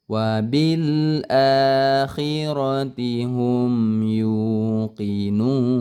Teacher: mim sukun ya, bertemu dengan huruf selain mim dan ba itu tidak boleh didengungkan ya. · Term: izhar syafawi